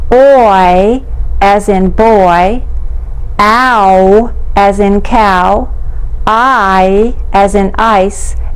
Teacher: the diphthong s' which are made with the mouth moving to two different positions